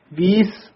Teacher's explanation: ਵਵੇ ਨਾਲ ਬੋਲਣਾ ਬਬ ਦੇ ਨਾਲ ਨਹੀਂ ਬੋਲਣਾ ਬੀਸ ਨਹੀਂ ਕਹਿਣਾ ਹੈ। ਲਖ ਹੋਵਹਿ ਲਖ ਵੀਸ ਲਖ ਲਖ ਗੇੜਾ